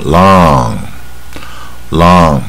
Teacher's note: 所以他掌握住这个卷舌啊，后面带鼻音